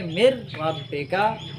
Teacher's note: اب دیکھیں کہ را کی شاد میم کو اپنی طرف کھینچ تو رہی ہے لیکن من رب کا نہیں پڑھ سکتے. مر رب کا نون اس میں بالکل سائلنٹ ہو جائے گا. رسم الخط لکھنے میں آئے گا لیکن رسم الادائیگی پڑھنے میں نہیں آئے گا. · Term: بلا غنہ